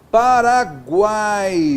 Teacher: o A é vogal, aqui o U é semivogal e o I é semivogal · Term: tritongo